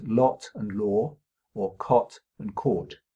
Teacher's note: many speakers of American English do not have two distinct vowel sounds in words that I would pronounce in British English as lot and law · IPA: ɑ ɔ